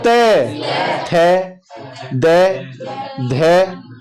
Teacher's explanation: जीभ ऊपर दांतों के लगती है